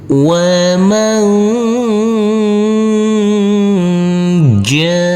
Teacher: Di sini ada huruf nun sukun yang bertemu dengan huruf jim, maka untuk huruf nun sukunnya kita baca dengan samar-samar dan kita dengungkan. Pada waktu berdengung, persiapan masuk ke huruf jim. Kita baca dengan samar-samar dulu untuk huruf nun ini. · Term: ikhfa